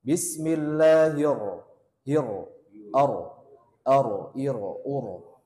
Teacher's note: Tapi ro-nya digetarkan sekitar 2 sampai 3 getaran saja. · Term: takrir